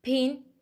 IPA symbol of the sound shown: p, t, k